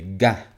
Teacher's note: we need to take a stop but the g is not at the front of your mouth it's at the back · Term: stop sent to the back